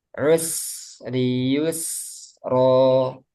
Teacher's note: sin dia termasuk rokhawah hamas. Jadi suara dan udaranya mengalir.